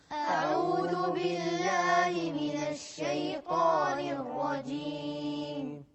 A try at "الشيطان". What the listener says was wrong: شيطان خطأ، الشيطان الطاء عليها فتح. أعوذ بالله من الشيطان الرجيم.